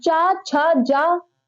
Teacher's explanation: चा वर्ग को स्पर्श संघर्षी कहा जाता है